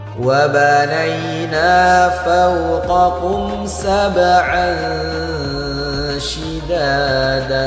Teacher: Perhatikan tanwin berjumpa dengan huruf syin. Maka cara bacanya harus kita samarkan dan dengungkan dua harakat. Ukupnya disebut ikhfa.